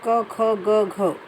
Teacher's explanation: जैसे अगर मैं कवर्ग की बात करूं तो कवर्ग में क, ख, ग, घ ये वर्ण हैं, तो ये कंठ से बोले जाते हैं